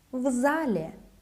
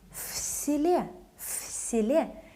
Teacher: В зале, V remains voiced, but В селе, it becomes voiceless.